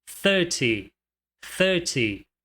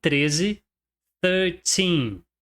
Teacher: no número 30, a tônica tá somente na primeira sílaba